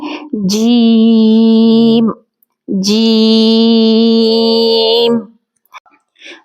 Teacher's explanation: جیم جیم کو ادا کرتے وقت ہم اس بات کا خیال رکھیں گے کہ جیم میں یا کی آواز نہ آئے اور جیم کا مخرج زبان کا درمیانی حصہ اپنے مد مقابل اوپر سامنے جو اس کے مد مقابل تالو ہو اس کے ساتھ ٹچ ہو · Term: حرف جیم